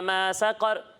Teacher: सीन को पुर नहीं पढ़ना, बारीक पढ़ना है। और दूसरी बात ये कि यहाँ रा को पुर पढ़ना है, बारीक नहीं पढ़ना।